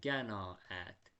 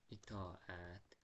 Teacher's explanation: Deməli, necə qiraət baxın bu sözlərdə, bu sözlərdə birinci elə bil bunların arasına y samiti əlavə olunur. Amma qətiyyən y samiti əlavə olunmur.